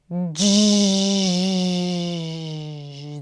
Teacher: you take the voiced stop sound, d, and then you release it gradually to the fricative, j. This is the voiced, okay? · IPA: /dʒ/